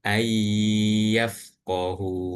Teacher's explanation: Kemudian idgham bi gunnahnya itu yang nun sukun ini bertemu dengan huruf ya. Maka itu nunnya seakan-akan nggak dibaca dan langsung masuk ke huruf ya dan dibaca dengung.